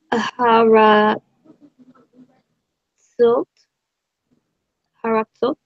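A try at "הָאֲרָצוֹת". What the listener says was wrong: Yep, good job.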